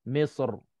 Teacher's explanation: mulut kita masih muncung ke depan untuk tebalkan sad dan kita kekalkan muncung tu sementara nak gegarkan huruf ra, makhraj ra.